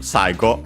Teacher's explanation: accented on the sa, by the way, the first syllable